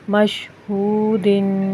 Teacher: مشہو، دال دو زیر دن، دال کے اوپر حرکت تنوین ہے، اس کو ایک الف کے برابر رک کر غنہ کریں گے۔ مشہودن، اور جب ہم وقف کریں گے تو دال پہ قلقلہ ہوگا، تھوڑا سا ہلا کر پڑھیں گے کیونکہ دال حروف قلقلہ میں سے ہے۔